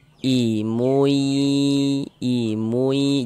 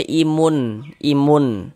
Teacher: jangan dibaca imun tapi dibaca imui masuk melebur kemudian dighunahkan atau didengkungkan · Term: idgham bighunah